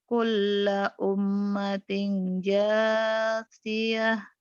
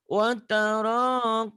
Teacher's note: Watara umnya ditahan gunnah.